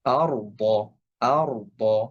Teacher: র এর উপরে সুকুন এবং তার পূর্বের হরফে জবর। অর্থাৎ এই রটা মোটা করে উচ্চারণ করতে হবে।